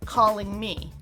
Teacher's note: The NG is the back of your tongue making contact, and the air is in your nose. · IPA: /ŋm/